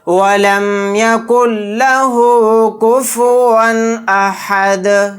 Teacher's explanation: آیت کرنے کی صورت میں دال کو ساکن بنا کر پڑھیں گے اور یہاں پر قلقلہ بھی کریں گے